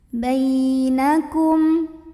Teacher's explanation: Bainakum, di sini ada idhar syafawi karena ada mim sukun yang ketemu sama huruf kaf. Maka mim sukunnya ini dibaca dengan jelas.